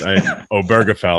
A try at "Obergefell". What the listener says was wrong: You got it close. The stress is on the O, not the burr. So it's Obergefell.